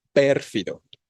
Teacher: pérfido, con la tonicidad en per. No decimos perfido.